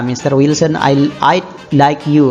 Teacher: Notice the rising intonation on Mr. Wilson, which he used to address someone.